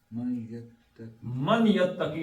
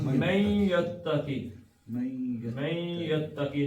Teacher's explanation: نون کو یہ کے ساتھ ملا کے پڑھیں گے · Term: ادغام